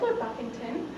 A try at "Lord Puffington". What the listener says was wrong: What? What did you say? You said Buffington. The name is Puffington. Lord Puffington.